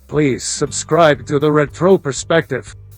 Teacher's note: You can hear there that the O was slightly higher in intonation and it didn't sound natural when he said retro perspective. So what I did was lowered that, stretched it out slightly, made it longer, and we got this.